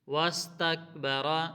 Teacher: واستکبر را کو موٹا پڑھیں گے